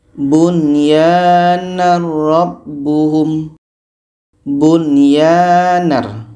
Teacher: Bunyar nun jelas, ya jelas dan tidak ada dengung. Bunyarbuhum hukumnya izhar wajib.